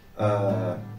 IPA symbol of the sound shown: ə